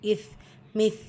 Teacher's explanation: மேற்பர்வரிசை உடைய கீழ் ஓரத்தில் நுனிநாக்கு ஓரசி உச்சரிக்கணும்